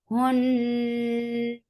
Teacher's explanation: As you will touch noon, your lips should be in a straight position. And noon has ghunnah.